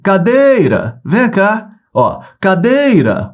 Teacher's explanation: onde é que se prolonga no dei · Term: sílaba tônica